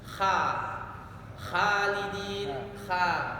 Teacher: Kemudian kesalahan yang berikutnya adalah membacanya dengan tipis kha-nya padahal tebal tadi, pangkal lidah terangkat. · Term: huruf kha